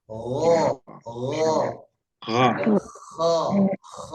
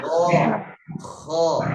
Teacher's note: Di pangkal lidahnya, lidah bagian belakang itu terangkat naik. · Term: huruf isti'la